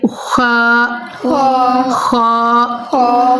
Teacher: ये हलक के ऊपर वाले हिस्से से अदा होगा। और दूसरी बात है ये हरूफ मुस्तालिया है, तो हमने ना हरूफ मुस्तालिया की अदायगी का भी ख़ास ख्याल करना है।